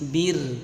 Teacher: kalau kasrah bertemu ra sukun dibaca tipis, bir, bukan bir, ya, tapi bir, tipis.